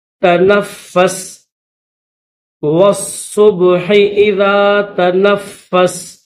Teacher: والصبح، والصبح اذا تنفس، نون کے بعد فا ہے درمیان میں، اور فا کے اوپر تشدید بھی ہے اور زبر بھی ہے تو فا کو سختی کے ساتھ پڑھیں گے۔